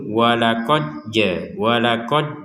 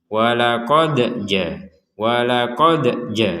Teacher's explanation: huruf Dal ini yang kita pantulkan barusan jangan sampai terkesan dimasukkan kepada huruf Jim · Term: pantulan